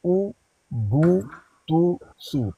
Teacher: उसके बाद है पेश, उ बू तू सू। पेश की अदायगी के वक्त होंठों को मुकम्मल गोल किया जाता है।